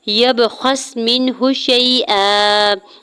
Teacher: یا کے زبر کو با ساکن کے ساتھ ملاتے ہوئے با ساکن پہ کلکلا کریں گے